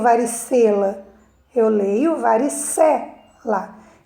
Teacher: Então, olhando a palavrinha separada lá, nós vamos perceber que ela está na penúltima sílaba, porque eu sempre conto da direita para a esquerda, tá bom? Então, em varicela, a sílaba mais forte é a penúltima